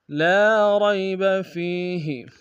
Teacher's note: را کو یا کے سامنے آئیں گے، یا لین بغیر کھینچے پڑیں گے، اور فیہ یا مدہ ایک انداز میں کھینچیں گے۔